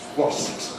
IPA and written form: wɒsps (wasps)